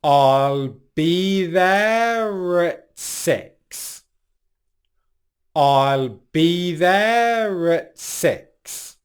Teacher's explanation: You can probably also hear in this phrase that we're using a linking R sound